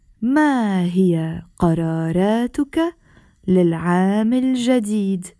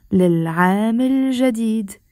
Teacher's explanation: I'm not pausing when I'm saying للعام الجديد. I'm not saying للعام الجديد. I'm putting a liaison and I'm saying للعام الجديد.